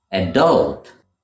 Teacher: adult but in the US you would hear it pronounced adult where the stress falls on the second syllable